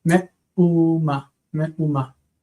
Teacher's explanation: What and what, meaning anything at all, and they ram it together instead of hey, it just has a vowel, a guttural, like a glottal stop